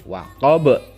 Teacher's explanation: huruf qalqalah saat waqaf juga atau berhenti dia memantul